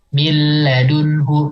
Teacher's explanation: sedikit bainiahnya ya untuk huruf lamnya jadi enggak enggak ditahan banget tapi juga ada sedikit aliran